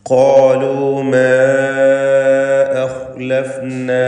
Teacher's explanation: മാ എന്നതിലെ ദീർഘം മദ് മുൻഫസിൽ ജായിസാണ്. 4-5 ഹറക്കത്തിൻ്റെ അളവിൽ അലിഫിനെ ദീർഘിപ്പിക്കുക. ദീർഘാക്ഷരമായ അലിഫ് ഒരു പദത്തിൻ്റെ അന്ത്യത്തിലും അടുത്ത പദത്തിൻ്റെ ആരംഭത്തിൽ ഹംസയും വന്നതാണ് ഇതിനുള്ള കാരണം.